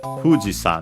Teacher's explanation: So Fuji high and everything else low. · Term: accent on the first syllable